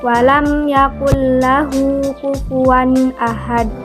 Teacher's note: yakullahu kufuwan Ahad nah disitu terdapat hukum bacaan Idgham bilagunnah yaitu nun mati bertemu dengan huruf lam jadi membacanya tanpa disertai dengan dengung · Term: idgham bila huna